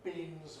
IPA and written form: biːnz (beans)